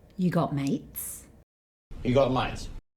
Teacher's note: He stops himself just before he makes the t sound.